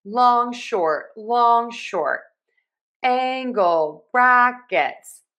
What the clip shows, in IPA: ˈæŋ.ɡəl ˌbræk.ɪts